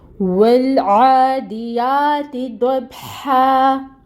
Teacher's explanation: با ساکن ہے، حروف قلقلہ میں سے ہے، اس پہ قلقلہ ہوگا۔ آگے آ رہی ہے ہا کے اوپر زبر تنوین ہے، آیا مکمل ہو رہی ہے تو ہم اس کو 2 حرکت کے برابر لمبا کریں گے۔ · تنوین ختم ہو جائے گی، وقف کی صورت میں ہا پڑھیں گے اس کو اور 2 حرکت لمبا کھینچیں گے۔